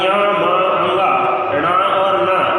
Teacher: प्रत्येक वर्ग का अंतिम अक्षर अर्थात य म अंगा ण और न, इन 5 वर्णों का स्थान नासिका भी होता है